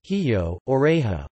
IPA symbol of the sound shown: x